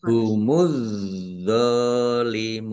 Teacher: langsung masuk ke huruf berikutnya yaitu dha ditandai dha-nya ada tasdidnya dha-nya dibaca double. · Mim domah wawu sukun mat tobi'i tetapi karena di akhir kalimat atau karena bertemu dengan huruf terakhir yang dibaca sukun karena wakof maka menjadi mat arid lis sukun dibaca panjang boleh 6, 4, atau 2 harokat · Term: alif lam samsiah